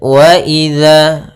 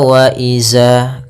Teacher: Pada lafal wa idza, hati-hati dalam melafalkan zalnya, jangan dibaca wa iza. Ini kesalahan yang sering terjadi, yaitu mengganti huruf zal dengan huruf zai.